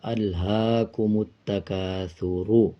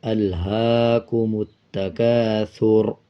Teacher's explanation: را کا پیش سائلنٹ کر دیں گے اور را کو آدھا پڑھیں گے اور را کو پر پڑھا جائے گا۔